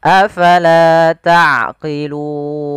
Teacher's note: pada lafal afala fa harus alirkan nafasnya la jangan dibaca afala tapi afala.